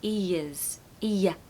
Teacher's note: Just be careful of the R in ears, because I know it's quite a difficult word actually, but the R turns into a Y sound